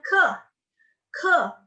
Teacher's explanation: yang dipakai adalah pangkal lidah lidah bagian belakang